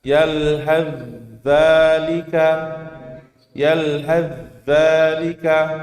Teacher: zal lebih kuat daripada huruf sa. Maka langsung masuk ke huruf zalnya.